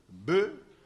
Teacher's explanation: Le B est labial et sonore. Il faut le B, il faut qu'il y ait le son qu'on entend.